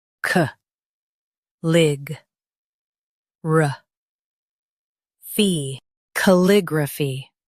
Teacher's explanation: Stress lig and keep ra soft.